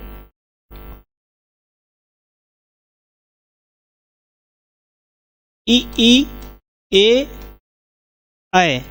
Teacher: ये जो वर्ण है ई ई ए ऐ, ये जीभ के अग्रभाग से बोले जाते हैं।